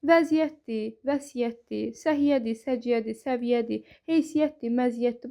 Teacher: Bu kimi sözlərdə tələffüz zamanı y sözün kökündə olmasına baxmayaraq y-nın biri düşür.